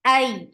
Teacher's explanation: Hamza is very sharp, no flop sound.